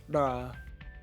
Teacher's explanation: the voiced post-alveolar tap